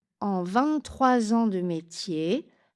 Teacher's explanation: 23 ans, liaison en Z, obligatoire.